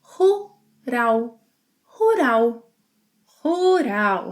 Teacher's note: the final L sound that in Brazilian Portuguese is often pronounced as U.